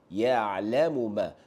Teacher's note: Jangan ditukarkan huruf ain kepada hamzah. Tolong betulkan makhraj sebutan huruf ain anda.